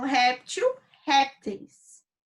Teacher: eles são paroxítonas, com a penúltima sílaba mais forte, não a última